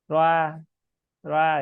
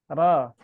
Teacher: ro-nya seperti ada tercampur vokal A ya. Roa gitu.